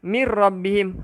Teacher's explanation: Jadi dia tak bunyi MIN, dia bunyi MIR. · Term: idgham bila gunnah